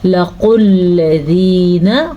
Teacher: لَقُلْ الَّذِينَ قاف کو موٹا پڑھیں گے. قاف تو ہمیشہ ہی موٹا پڑھا جاتا ہے